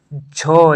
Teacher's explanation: च वर्ग है उसका उच्चारण स्थान जो है तालव्य होता है